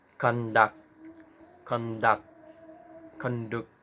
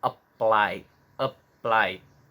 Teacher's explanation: biasanya untuk kata kerja biasanya itu di suku kata kedua, emphasis at the second syllables.